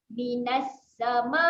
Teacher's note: Ma dibaca panjang sebanyak 4 ataupun 5 harakat.